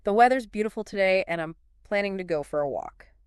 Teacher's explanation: the weather is becomes the weathers right it's all about that smooth flow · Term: connected speech